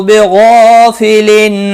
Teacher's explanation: حروف مستعلیہ کے بعد جب ایک ہی کلمے میں الف پہ آتا ہے وہ بھی پر پڑا جاتا ہے